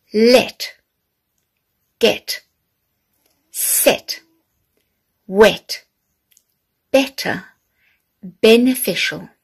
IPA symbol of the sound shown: e